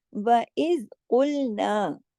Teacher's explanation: व इज कुलना में सब बारीक पढ़ा जाएगा, काफ मोटा होगा।